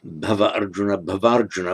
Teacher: Those two vowels have merged to become one vowel.